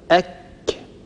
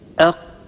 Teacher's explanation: لاحظوا أن مخرج الكاف هو أعلى بقليل من مخرج حرف القاف. · طبعا الذي يحاذيه من الحنك الأعلى هنا الحنك اللحمي والحنك العظمي معا. لاحظوا كيف أن مخرج حرف الكاف قد اقترب قليلا جهة مقدمة الفم.